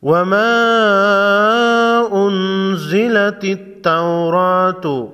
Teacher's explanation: وما انزلت التوراۃ، نون ساکن پر اخفائی حقیقی ہوگا، را پر کڑا زبر ہے، را کو موٹا پڑھیں گے